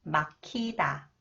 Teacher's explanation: when 히읗 comes after the final consonants, 기역, it combines with 히읗. It is pronounced as 크